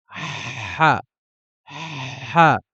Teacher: Le ha va être une pression à l'intérieur de la gorge. On va mettre une pression de sorte à freiner un peu l'air. Ha, ha. Il n'y aura pas de correspondance en français pour le ha.